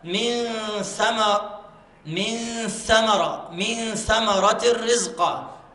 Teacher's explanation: النون مخفاة والغنة مرققة